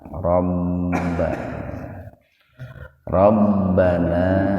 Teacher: Ba-nya itu memakai tasdid itu. Jadi ditahan.